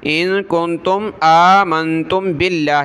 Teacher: یہ جو نون ساکن کلرفل ہیں ہر جگہ ان پر ناک میں آواز پیدا کریں گے